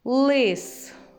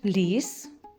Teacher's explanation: у слові лис звук л звучить твердо А у слові ліс ль звучить м'яко